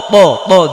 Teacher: জিব্বার আগা সামনের উপরে দুই দাঁতের গোড়ায় লাগে, মানে খুব মোটা করে উচ্চারণ করতে হবে।